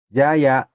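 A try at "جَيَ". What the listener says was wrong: Jaya, bagus.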